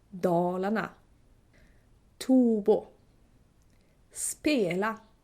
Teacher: The first tone is on the first or second syllable, and it's a very deep one. And then you have another tone that is a little bit less deep, a bit further in the word. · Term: tones